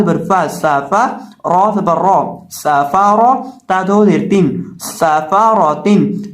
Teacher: सीन के अंदर सिटी की आवाज पैदा करके पढ़ेंगे और रॉ को पुर करके पढ़ेंगे।